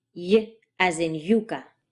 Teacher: Now what complicates this story is that there is another version of this symbol, which looks like a J with a little curly tail at the end. That sound is basically the familiar English y sound, with a bit more grit to it.